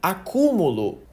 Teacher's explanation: na palavra acúmulo a sílaba tônica tá bem no meio